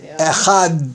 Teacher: The chet in Echad should not be shortened so that the word sounds like Ichad · One should sufficiently elongate the Dalet in Echad